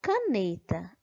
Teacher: Na palavra caneta, a sílaba mais forte é a sílaba ne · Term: sílaba tônica